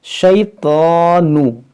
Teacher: طا حروف مشتعلیہ، اس کو موٹا کریں گے اور اس کو آپ کھینچ سکتے ہیں کیونکہ اس کے اوپر کھڑا زبر ہے